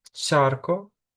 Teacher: Також можна інколи зустріти варіанти, як чарко, ближче щось до ц навіть, але воно не так розповсюджене.